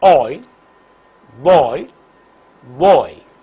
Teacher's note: During the articulation of this diphthong oi, the glide movement begins from a position in between half open and open and moves in the direction of RPE.